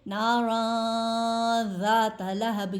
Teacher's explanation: یہاں پر غنہ کریں گے، ناراً ذات لہب، یعنی آواز نون کی آواز کو 2 سیکنڈ کے لیے ناک میں چھپائیں گے